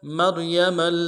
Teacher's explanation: میم کو را کے ساتھ ملائیں گے، را کو موٹا کرنا ہے